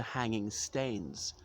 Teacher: that's Scots dialect pronunciation of stone, because in Scots dialect people usually just change the vowel